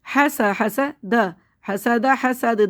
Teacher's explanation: دال ساکن ہو گیا دال پہ قلقلہ کریں گے